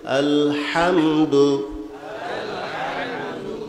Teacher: হাটা হইলো সিফাতে হামসের হরফ বাতাস চালু থাকবে হরফটা দুর্বল হবে আলহামদু হামদু কইলে হবে না গলত আলহামদু আলহামদু মুখ খুলতে হবে